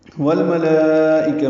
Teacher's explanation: والملائکہ میں لام ساکن پہ اظہار